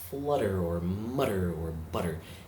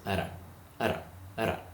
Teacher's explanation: it's more like a very light d sound which is only a hair removed from the flutter of a rolled r my tongue flips back on the roof of my mouth towards · only a hair removed from the flutter of a rolled r my tongue flips back on the roof of my mouth towards the front and it doesn't linger there for one second longer than it has to